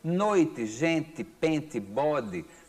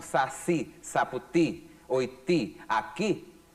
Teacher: termina com o som de I, mas que não é pronunciado de forma forte no final, não é tônico